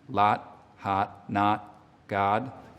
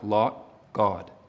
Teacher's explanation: It's going to be a little bit lip rounded in a Boston accent